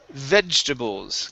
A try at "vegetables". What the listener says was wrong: This word is vegetables. Okay, so this E here in the middle, this is silent. We do not pronounce it. Vegetables. Vegetables. So pronounce that G, okay, as a J. So vegetables.